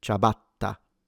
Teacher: pay attention to the double T, because it's a longer or stronger sound